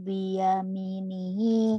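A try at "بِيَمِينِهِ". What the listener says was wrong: Biyamininya panjang nih, ada panjang.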